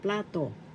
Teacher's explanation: First syllable pla, second syllable to. The accent is in the first syllable